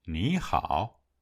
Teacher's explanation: When two low tones or two third tones follow one another, the first syllable is pronounced on the rising tone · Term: third tone change rule